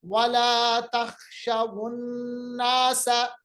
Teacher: वाव लेन को, उसका जो सुकून था वो हटा के उस पर हमने पेश दे दिया, और उसको हमने दूसरे कलमे के हर्फ से मिलाया